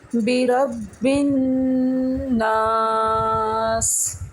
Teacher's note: نون کے اوپر تشدید ہے تو ہم غنہ کر رہے ہیں اور اس کو تھوڑا سا کھینچ کے پڑھ رہے ہیں